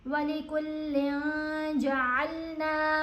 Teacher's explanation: یہاں پر جب بھی نون ساکن یا نون تنوین کے بعد ان 15 حروف میں سے کوئی حرف آئے جو میں نے ابھی دہرائے ہیں، تو ہم نے نون کی آواز کو ناک میں چھپا کر پڑھنا ہے اور ایک الف کی مقدار جتنا ٹھہر کر بھی پڑھنا ہے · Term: اخفاء